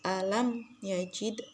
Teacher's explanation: Kemudian lanjut di ayat ke-6 alam yaitu alam yajid yaitu terdapat hukum bacaan izhar syafawi yaitu mim mati bertemu dengan ya, maka hukum bacaannya yaitu izhar syafawi, mimnya tidak boleh berdengung yaitu harus jelas alam yajid.